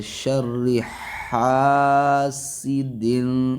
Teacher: ہا کو حلق سے ادا کریں گے